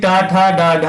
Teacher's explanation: टा ठा डा ढा होते हैं, ये आपके मूर्धन्य व्यंजन होते हैं